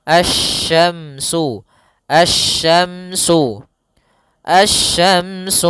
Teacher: langsung ke huruf syin makhrajnya dari tengah lidah kita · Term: huruf shin